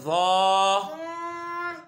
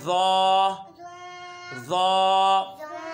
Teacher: ज़ो ज़बान का सिरा ऊपर के दांतों के अंदरूनी किनारे से अदा होते हैं।